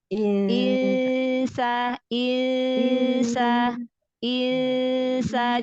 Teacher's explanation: Berarti nun sukun dibaca samar disertai gunnah. Samar. Tipis ya, Ya, karena ketemu dengan nun huruf sukunnya tipis. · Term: Ikhfa